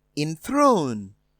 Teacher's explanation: enthroned is stressed on the second syllable